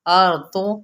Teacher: را پر اور ضاد بھی پر پڑھا جائے گا